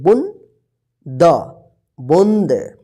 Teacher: यह चंद्र बिंदु है ना इसके उच्चारण जो है ना मुह और नाक की मदद से होता है